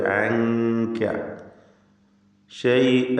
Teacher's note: അൻക, ഈ പദത്തിൽ സാക്കിനത്തായ നൂൻ ഇഖ്ഫ ഹഖീഖി നൽകി മറച്ചു മണിക്കണം, അവ്യക്തമാക്കി മണിച്ചുകൊണ്ട് ഉച്ചരിക്കുക.